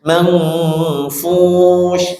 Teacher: Itu ada nun sebelum ketemu fa, ikhfa dengung manfush itu shin ya. tengah lidah ke langit-langit, sifat bersifat tafasyi